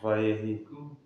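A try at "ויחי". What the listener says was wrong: It's a chet. They didn't put in the ch. But it's Vayehi. It's a chet. Vayehi. Vayechi. Vayechi.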